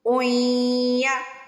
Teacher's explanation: دو پیش کے بعد یا پہ شادہ آ جائے تو او کی آواز نہیں آئے گی، اوئی کی آواز آئے گی